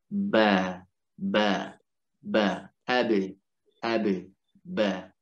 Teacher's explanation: ba itu dimana di dua bibir.